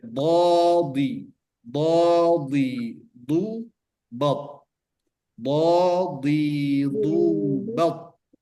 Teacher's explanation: Sifat daripada huruf dot ini dia mutbaqah, menempel. Jadi tetap menempel.